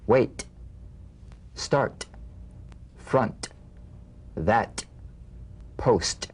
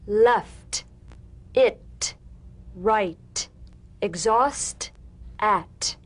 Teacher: The unvoiced T tongue front palatal stop consonant, cognate to the D. The same staccato springing action as the D drum beat, with no voice, forms the light tap of the T. Feel a gentle pulsation in the tongue.